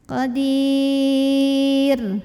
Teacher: Kemudian ra-nya disukunkan, dibacanya tarqiq